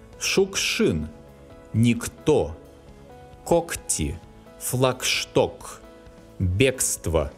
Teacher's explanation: Before voiceless sounds, the letters K and G specify a voiceless sound K.